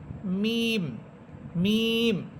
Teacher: মিম দুই ঠোঁটের শুকনো অংশ থেকে